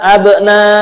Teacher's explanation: ba namanya huruf qalah, ada pantulan ketika mengucapkannya